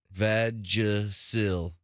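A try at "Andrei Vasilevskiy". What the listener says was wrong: It is not. It's Andre Vasilevsky. There's no Vagisil in his name, okay? There's no Vagisil.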